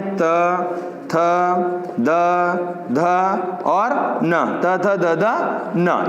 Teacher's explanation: वे ध्वनियां जिनका उच्चारण करते समय जीभ का आगे का भाग दांतों को स्पर्श करे, वो दंते ध्वनियां कहलाती।